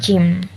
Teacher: gabungan atau biasa disebut dengan affricate, kombinasi letupan dan geseran, contoh hurufnya jim.